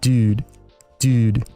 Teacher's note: the Californian U is slowly shifting towards the front of the mouth · The Californian U is pronounced more in the middle of the mouth, sounding like U.